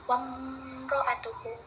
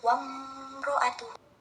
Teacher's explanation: Izhar syafawi adalah hukum bacaan ketika mim mati bertemu huruf hijaiyah selain ba dan mim. Bunyinya terang dan jelas tanpa berdengung dengan mulut tertutup. Contohnya wamro'atuhu, ada huruf mim dan ro yang penyebutannya begitu jelas.